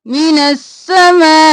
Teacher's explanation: نون دو کو سین کے ساتھ ملائیں گے اور سین دو بار پڑھیں گے، الف لام خالی ہے اس کو نہیں پڑھیں گے۔